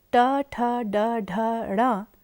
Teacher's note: ट वर्ग अर्थात ट, ठ, ड, ढ, ण तथा र और श का स्थान मूर्धा है